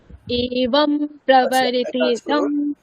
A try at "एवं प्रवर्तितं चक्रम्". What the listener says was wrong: আপনার রিদিমটা আসলে খুব একটা ঠিক এখনো বসেনি।